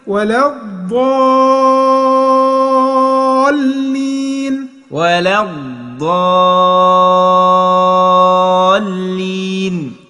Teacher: مشدد لازم تمد 6 حركات